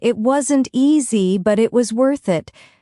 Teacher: It wasn't easy, but it was worth it. Stress on easy and worth.